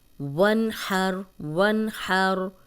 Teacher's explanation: نون ساکن ہے، آگے حروف حلقی آ گیا ہے تو یہاں پہ غنہ نہیں ہوگا